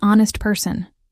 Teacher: The H is silent, so it starts with an O sound.